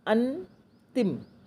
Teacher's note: हम नाक और मुंह दोनों से पढ़ते हैं, नाक दबा के पढ़ते हैं।